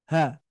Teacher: ketika kita membunyikan huruf H, itu pita suara itu membuka. Ya. Membuka pita suaranya.